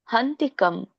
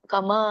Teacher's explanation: ಮ ಕಮ ಅನ್ನೋಂಗಿಲ್ಲ ಕಂ ವ್ಯಂಜನ ಇದ್ದಾಗ ನಾವು ಅರ್ಧ ಉಚ್ಚರಿಸಬೇಕು